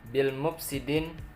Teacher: bil mufsidin itu adalah alif lam qamariyah, dibaca jelas ya